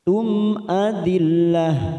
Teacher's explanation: Mim sukun bertemu hamzah, kita baca jelas tanpa mendengung. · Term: idhar